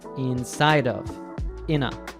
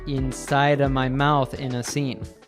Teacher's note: The article A reduces to a schwa sound, and of is a schwa plus V. They both link to other words.